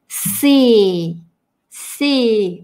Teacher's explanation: русскоязычное с глубокое, а здесь си, вот здесь вот она у меня около зубов.